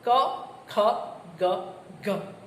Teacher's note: જીભનો પાછળનો ભાગ કોમળ પોચા તાળવાને સ્પર્શે ત્યારે કંઠીય વ્યંજન વ્યંજન પેદા થાય ક ખ ગ ઘ આ કંઠ્ય વ્યંજન છે